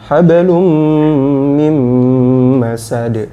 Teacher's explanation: Mim tasydid, mim tasydid ditahan.